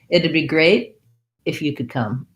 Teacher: And because we have this that T and D together, it would becomes it'd. This T becomes more of a flap.